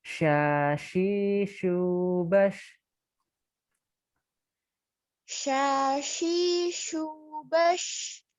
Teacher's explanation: shin ini udara menyebar ya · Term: tafashi